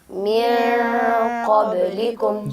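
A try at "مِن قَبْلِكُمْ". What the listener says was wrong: जी, यहाँ पे नून को ज़ाहिर करके नहीं पढ़ सकते। मिन क़ब्लिकुम ये गलत और रॉन्ग तरीका है अदायगी का, जबकि आप इख्फ़ा करके पढ़ेंगे। वल्लज़ीन मिन क़ब्लिकुम।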